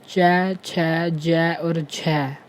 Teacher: Next है स्पर्श संघर्षी व्यंजन। वे व्यंजन जिनके उच्चारण में उच्चारण का समय अपेक्षाकृत अधिक होता है और उच्चारण के बाद वाला भाग संघर्षी हो जाता है, स्पर्श संघर्षी व्यंजन कहलाते हैं।